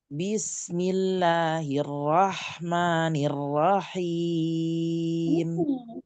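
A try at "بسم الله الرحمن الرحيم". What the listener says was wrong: Huruf ro enggak dinaik-naikkan.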